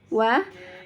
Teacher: termasuk huruf assyafa Thailand atau terbentuk dari dua bibir nah ini dua bibir yang membentuk bulatan-bulatan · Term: huruf wow